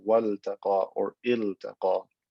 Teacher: because this is not lam at-ta'rif, it's a lam for a verb, I'm going to pronounce the lam clearly as waltaqa or iltaqa.